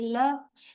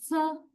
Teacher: In all these three sounds, we touch the alveolar ridge, or we almost touch the alveolar ridge with the tip of the tongue. So such sounds are called alveolar consonants because we produce them by touching the alveolar ridge.